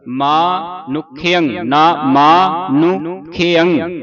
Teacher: ਇੱਥੇ ਨਨੇ ਦੇ ਔਂਕੜ ਉਚਾਰਨ ਹੋਵੇਗਾ। ਕਈ ਥਾਵਾਂ ਤੇ ਔਂਕੜ ਨਹੀਂ ਲੱਗਦਾ ਸਾਈਲੈਂਟ ਹੋ ਜਾਂਦਾ